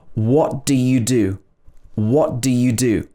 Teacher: Sometimes the first do would be pronounced d.